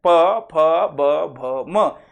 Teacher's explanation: ओष्ठ्य म्हणजे ओठ. ओठाची एकमेकांना हालचाल होते, स्पर्श होते, त्याला ओष्ठ्यवर्ण म्हणतात